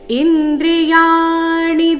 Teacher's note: ಬುದ್ಧಿರವ್ಯಕ್ತಮ ವಚ ಇಂದ್ರಿಯಾಣಿ ದಶೈಕಂಚ ಇಂದ್ರಿಯಾಣಿ ಇಲ್ಲಿ ಯ ದೀರ್ಘ ಮತ್ತೆ ಮುಂದೆ ಣಿ ರಸ್ವ ಬರಬೇಕು